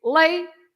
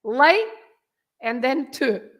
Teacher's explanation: You have two syllables, right? Yep. And you have to stress the first part. You have to say lay and then to, right?